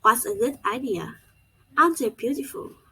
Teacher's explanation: The tone rises at the beginning and gradually falls at the end.